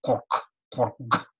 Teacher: На конце слова он прямо очень напряженный, очень глубоко в горле такой